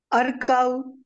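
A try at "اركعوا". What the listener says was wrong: ارکعوا، حمزہ تو زبر تو آئے گا نہیں، یا پیش آئے گی یا زیر آئے گی، کیا خیال ہے جی بتائیں ذرا؟ ارکعوا،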